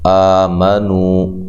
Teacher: نہ، نون کو لمبا نہیں کرنا۔ آمنو، آ کھڑی زبر ہے اور الف مدہ کے قائم مقام، 1 الف کی مقدار کے برابر لمبا کریں گے۔ نو و مدہ ہے۔